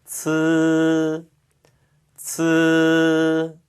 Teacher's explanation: 혀끝을 윗니 뒤쪽에 대고 그 사이에 공기를 내보내면서 발음하시면 되는 거였죠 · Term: 츠 발음